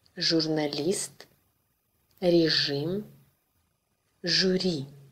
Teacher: Like Ж in English, azure. But with a tongue further back in and lips rounded.